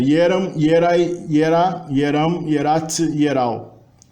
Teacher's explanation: Observa que o E inicial é pronunciado ie, né? Por influência eslava.